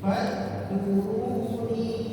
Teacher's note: huruf dal itu sifatnya mengalir, suaranya mengalir. Jangan kita paksakan berhenti. Jangan kita baca fadkuruni.